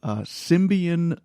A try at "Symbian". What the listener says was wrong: Symbian. Why are you putting an M in there? Symbian.